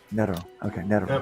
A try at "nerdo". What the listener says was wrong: No, use the D. Put the D, because then you'll be saying something else.